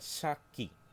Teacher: There is a pause in between the word sa and ki. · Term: sakun